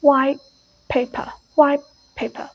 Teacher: white it's become paper right so paper it begins with p so t is changed to p · they change the white T sound into the P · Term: assimilation